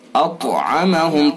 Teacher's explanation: طا کو پر کریں گے اور قلقلہ بھی کریں گے